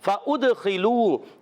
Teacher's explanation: فا کا مخرج اوپر والے دانتوں کے کنارے، نیچے والے ہونٹ کے تر حصے سے فا ادا ہوتا ہے. ادخلوا دال میں قلقلہ ہوگا اور خا پر رہے گا.